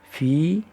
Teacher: یا ساکن سے پہلے زیر ہے اس لیے یا مدہ کہلاتی ہے، یا کو کھینچ کر پڑھیں گے